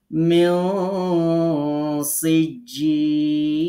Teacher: নুন সাকিনের পরে সিন থাকার কারণে এখানে নুনটাকে গোপন করে গুন্না করে পড়তে হবে। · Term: ইকফা